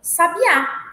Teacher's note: o acento tônico é na última vogal da palavra